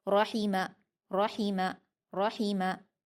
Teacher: हा और मीम को जल्दी पढ़ेंगे। हाफ हल्की में से है। तो इसको हम हलक से अदा करेंगे।